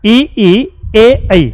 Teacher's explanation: ई ई ए ऐ बोलेंगे तो जीभ हल्की सी आगे से क्रिया करेगी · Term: अग्र स्वर